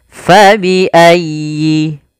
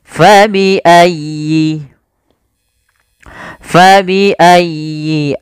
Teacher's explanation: Fa alirkan nafasnya ya tasdid ditekan dan dialirkan